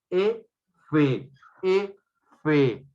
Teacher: Labio inferior con la aproximación de los incisivos superiores. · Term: labio dental